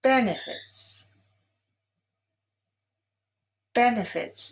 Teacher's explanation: Benefits is stressed on the first syllable.